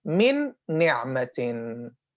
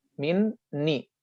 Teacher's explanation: Obviously, we're gonna drop the first noon, stress the second. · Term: idgham